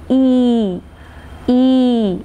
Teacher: While making the sound E, the lips are not rounded. It is in an unrounded or in a neutral position. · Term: unrounded vowels